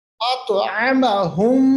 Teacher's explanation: میں آواز کو لے جا رہا ہوں ناک کے بانسے میں · جاتا ہے، مدغم ہو جاتا ہے، مکس ہو جاتا ہے، یعنی ہونٹ بند کر کے آواز ناک کے بانسے میں چلی جاتی ہے، ایک الف کے برابر اس کو کیا جاتا ہے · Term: ادغام شفوی